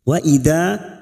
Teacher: Wa idza fathah bertemu alif 2 harokat kita panjangkan mat tabi'i